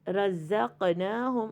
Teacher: اس کے اندر دونوں ہمارے اوپر والے داند اور نیچے والے داند دونوں ساتھ جڑ کے پھر ادا ہوں گے، اور اس کی ادائیگی میں تھوڑی سی بز کا ساؤنڈ ہوتا ہے زا میں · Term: زائی